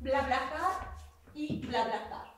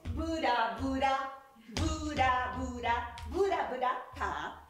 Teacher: pues tendamos a intercalar una pequeña vocal